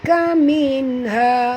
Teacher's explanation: nun mati bertemu ha, tak boleh dengung ya. Izhar halqi.